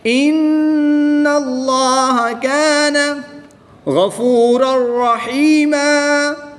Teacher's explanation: یہاں بھی اس میں جلالت اللہ عز و جل کے لام سے پہلے نون مشدد پر زبر ہے تو اس لام کو بھی ہم پر یعنی موٹا پڑھیں گے، نون مشدد میں غنہ کر کے پڑھیں گے